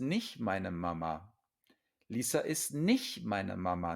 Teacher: Notice that I swallow the T when I say this sentence quickly.